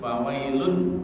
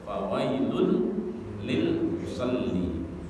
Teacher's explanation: Kalau fawailun kan idhar jelas. Kalau ketemu lam maka kemudian lunnya itu dimasukkan menjadi lam di depannya. Fawailul lil musalli. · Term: idgham bila ghunna